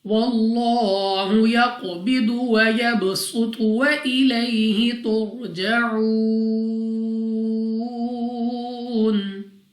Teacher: लाम ऑफ अल्लाह से पहले हर्फ पर जबर, तो इस लाम ऑफ अल्लाह को पुर यानी मोटा पढ़ना है। कौफ हमारे पास मुस्तालिया में से भी है, कलकला में से भी है, मोटा भी पढ़ेंगे और कलकला भी करेंगे।